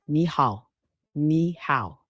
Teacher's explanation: Make sure to use the correct tones. Ni, third tone, starts mid, dips, then rises.